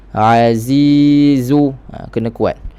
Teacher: huruf zai kuat, dia ada sifat yang kuat, safir, bunyi macam lebah. Jadi kekuatan, bunyi kekuatan zai itu kena jelas.